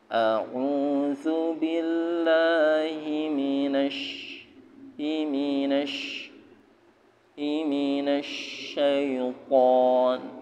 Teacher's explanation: To diangkat ya, harfu isti'ala. Dia punya sifat isti'ala, mengangkat. · Di tengah lisan, wasatal lisan, ya. Sya itu di tengah lisan bersama dengan ja. Tapi sya agak keras.